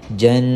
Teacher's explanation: Wajib tuan-puan kita dengungkan bacaan sekadar 2 harakat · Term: Wajibul gunnah